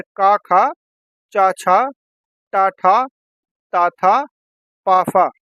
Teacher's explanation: हर वर्ग का पहला और दूसरा व्यंजन जो होता है अघोष होता है।